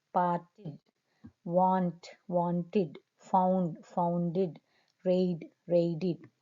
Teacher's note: So when the word ends with t, part, want, found, read, t and d sounds, then they are pronounced as id. The past tense endings are pronounced as id. Remember, these two sounds, t and d, are pronounced with id.